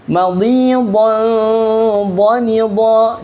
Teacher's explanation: Ya, di situ juga kita bisa belajar tentang ikhfa dan izhar, yang mana didengungkan, misalnya madhidan, berdengung kan, madhidan dhanida. Kenapa berdengung? Karena tanwin bertemu dengan dha.